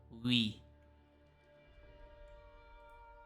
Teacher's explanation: It starts out with u, and then it morphs into e.